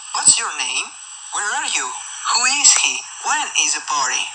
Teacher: The intonation in these questions will decrease at the end of the question. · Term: Intonation in informative questions